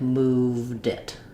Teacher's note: if I'm linking to a vowel, then I can just think about that like moved it, where I say my V and my D, moved it. Both sounds are there.